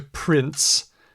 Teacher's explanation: prins is that you're going from an n to an S you're going from nasal the N comes out your nose the S comes out your mouth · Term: t sound